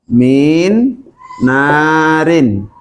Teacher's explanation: Di sini ada nun sukun bertemu dengan nun, padahal nun termasuk dari salah satu dari yanmu, ya, ketemu dengan salah satu dari yanmu, maka terjadilah namanya hukum idgham. Jadi suaranya nun ini huruf pertama dimasukkan ke huruf kedua, artinya masuk itu dimasukkan, kemudian didengungkan, ditahan dulu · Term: idgham bi gunnah